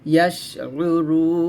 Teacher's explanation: শিনটা হামস, এখানে বাতাস হবে